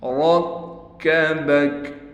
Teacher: را کو موٹا بھی پڑھیں گے، را کو کاف سے ملائیں گے، کاف پر تشدید ہونے کی وجہ سے کاف پر تھوڑا ٹھہراؤ کیا جائے گا